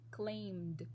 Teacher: edi endings becomes d sound when the last sound of the verb of the regular verb is voiced